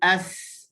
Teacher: Sebab huruf ta dengan huruf sin ni dia beza sikit saja. Huruf sin berada di hujung lidah, masih lagi berada dalam mulut tanpa keluar ke gigi. Dia tidak boleh sentuh gigi.